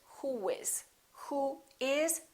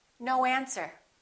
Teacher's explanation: in the last vowel position for example who in this case we don't put a little u in there we put a little W sound round your lips